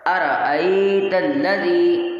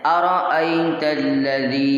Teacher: یہاں پر حمزہ کو کھینچنا نہیں ہے، فوراً سے پڑھنا ہے